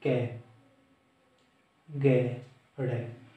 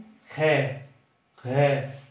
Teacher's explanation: अल्प प्राण जिसमें मतलब वायु कम निकलती हो, जैसे कै, गे, ड़े। लेकिन हमारी महाप्राण में खे, घे, इस तरह से ज्यादा वायु निकलती है